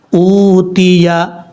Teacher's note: حمزہ کے بعد جو واو ہے اس کو لمبا کریں گے. اوتیہ، یہ واو مدہ ہے.